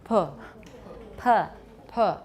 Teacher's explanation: If you add more lip rounding, make it tighter, then you've added labialization to a bilabial.